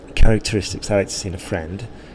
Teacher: we've put a bit of a stress on friend